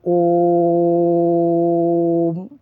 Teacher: प्त स्वर में तीन मात्रा का समय लगता है जैसे [हंसी] ओम देर तक बोलते हैं दो मात्रा से और ज्यादा बोलते हैं